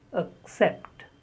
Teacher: It is not accept, it is accept. The first syllable is the schwa sound, accept.